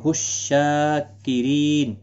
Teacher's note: شین کے اوپر کھڑی زبر ہے، ایک الف کی مقدار کے برابر کھینچ کر پڑھیں گے